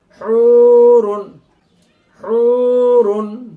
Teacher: এখানে সবগুলোতেই ঠোটগোল হবে। কেননা সব জায়গায় পেশ রয়েছে।